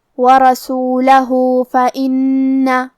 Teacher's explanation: کلمت رسولہ، یہاں حرف الہا پہ الٹا پیش ہے تو یہاں بھی حکم ہے مد صلہ صغرا، ہمیں اپنی آواز 2 مد کے برابر لمبی کرنا ہے